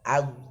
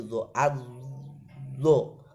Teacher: Kalau dal itu istifal, kalau dha itu isti'la. Kalau dal harus dijelaskan tipisnya, kalau dha harus dijelaskan tebalnya.